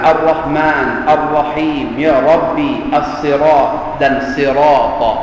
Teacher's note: kesemua keseluruhan ra ini dibaca dengan tebal · Jadi ra yang dibaca dengan tebal, Ar-Rahman, Ar-Rahim, Ya Rabbi, As-Sirat dan Sirata. Keseluruhan ra ini dibaca dengan tebal dalam bacaan surah Al-Fatihah.